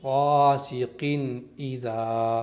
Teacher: Number 2، بغیر غننے کے پڑھیں گے، یعنی جب قن کو پڑھیں گے تو یہاں پر غنہ نہیں کرنا ہے، قن ایذا اس طرح پڑھیں گے۔ نمبر 3، جلدی پڑھیں گے، یعنی قن پر بہت دیر تک نہیں رکنا ہے · نمبر 1، نون کو ظاہر کر کے پڑھیں گے اپنے مخرج سے، یعنی تنوین کے اندر جو نون چھپا ہے اس کو اپنے مخرج سے ادا کرنا ہے۔ نون زبان کی نوک اوپر کے مسوڑھوں سے مل کر ادا ہوتا ہے۔ نون کو اپنے مخرج سے ہم نے پڑھ دیا تو نون ظاہر ہو جائے گا۔ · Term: اظہار